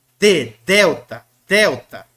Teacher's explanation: esse D com a língua nos dentes mesmo